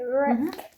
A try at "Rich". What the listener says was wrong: Well, don't say Rick. CH gives us k, right? CH gives us sound ch. Rich. Okay, rich.